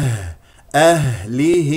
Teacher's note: الهاء الساكنه مهموسه فيها رخاوه ويجري فيها النفس وايضا اخرجها من اقصى الحلق باهتزاز الاوتار الصوتيه